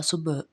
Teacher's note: با ساکن ہے، با پہ قلقلہ ہوگا